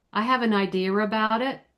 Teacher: the word idea ends in the uh and the word about begins with uh. So for the sake of people understanding us, we stick that R in the middle there to separate the words.